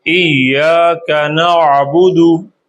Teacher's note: گلے کے درمیان سے آئین اور ہا